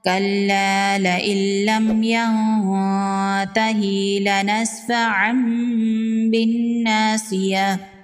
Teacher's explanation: نون ساکن کے بعد حروف اخفا میں سے تا ہے، یہاں پر اخفا ہوگا، نون کی آواز کو ناک میں چھپائیں گے۔ تنوین کے بعد با ہے اور یہاں پر چھوٹا میم ہے، یہاں پر اقلاب کا قاعدہ ہوگا، یہاں پر تنوین کو میم میں بدل کر پڑھیں گے۔ لنسفعا بالناصیہ، لنسفعا نہیں پڑھیں گے، لنسفعا پڑھیں گے اور یہاں پر غنہ ہوگا۔